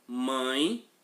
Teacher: O som também sai pelo nariz. Quando isso acontecer, é porque nós temos um ditongo nasal.